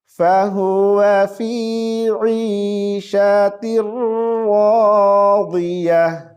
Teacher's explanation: रा पर शद है तो हम शद को थोड़ी देर के लिए खींचेंगे। · वाद को मोटी आवाज से पढ़ेंगे और रा को भी हम मोटी आवाज के साथ पढ़ेंगे।